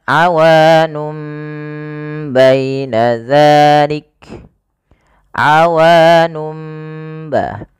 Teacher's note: mim ini menggantikan posisi suara nun yang dimatikan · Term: iklab